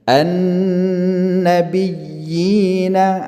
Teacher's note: Ya yang pertama itu kan ada tanda tasydid, maka dia ditekan kemudian dilepaskan ke ya sukun setelahnya, dipanjangkan lagi 2 harakat. Maka 2 ya bertemu di sini, ya tasydid dan ya sukun, maka dia disebut dengan mad tamkin, ya.